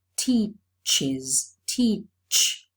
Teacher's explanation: the last sound of the verb is a sibilant so the third-person singular morpheme is realized as an extra syllable